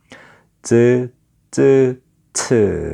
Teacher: 막았다 터지면서 마찰까지 일어나는 소리, 파찰음. 파열음이면서 마찰음인 것을 파찰음이라고 그래요.